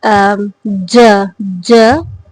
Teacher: these all are produced by the contribution of the hard palate and the middle part of the tongue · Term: palatal sound